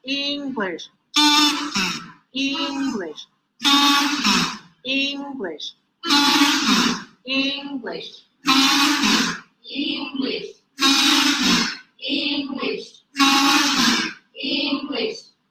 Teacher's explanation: To emphasize pitch change, high, low, high, low, high, low, pitch change on the same words